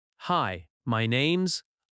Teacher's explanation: Notice how my name is becomes my name's.